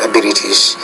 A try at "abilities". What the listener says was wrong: Again there, I would say instead of abilities, but abilities. My abilities in English. So again, you're having a little bit of trouble with that it. Like hit, heat, mit, meet. Abilities.